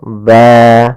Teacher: Mad iwat terjadi apabila ada huruf yang dia berharakat fathahin bertemu dengan alif alif di kemudian kita wakaf di akhir bacaan kita misalkan ban maka berubah menjadi panjang ba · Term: mad iwad